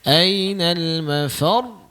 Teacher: Kena tekan sikit tu. Ada tasydid tu di ujung.